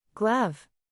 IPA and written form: ɡlʌv (Glove)